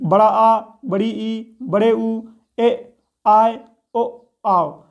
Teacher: दीर्घ स्वर ह्रस्व स्वर से ज़्यादा अर्थात 2 गुना समय लेते हैं।